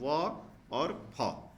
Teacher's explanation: व और फ निचले निचले होठों और ऊपर के दांतों से नीचे का होठ और ऊपर का दांत पर दबाव में पड़ता है व और फ ये दंतु से बोले जाते हैं व और